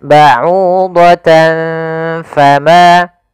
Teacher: di lafal au bertemu waw. Ini kita namakan dengan mad tabi'i pula, yaitu panjangnya 2 harokat